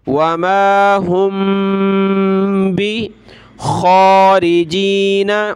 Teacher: ये मीम साकिन के बाद बा है तो यहाँ नाक में आवाज़ पैदा करेंगे